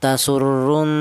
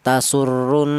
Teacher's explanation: Jadi ini cara bacanya didengungkan ya, ada nun yang bertasdid ya. Cara bacanya tasurrun ya, ada dengungnya dua harokat ya, tasurrun seperti itu.